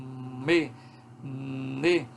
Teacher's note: Por exemplo, quando eu articulo um som nasal como me, ne, veja que a minha boca é totalmente fechada, ó, me, mas ainda assim a gente tem um som, porque a úvula ficou abaixadinha e o som, a vibração das cordas vocais produziu um som que sai pela cavidade nasal, escapa pelas narinas